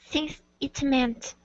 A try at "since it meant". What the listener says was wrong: Give me an S at the end. Since it meant.